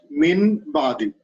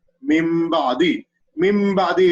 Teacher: Min ba'di, it is incorrect because after nun sakin, ba comes, so we have to change the noon into mim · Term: qalb or iqlab